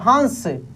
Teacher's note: इसमें स्पष्ट रूप से न का उच्चारण हो रहा है, लेकिन आधा, काफी तेजी से।